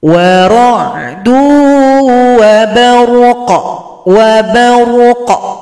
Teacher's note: Nah, maka sempurnakan dulu. Berikan sifat tebal pada huruf ra karena didahului fathah, baru diberikan pantulan.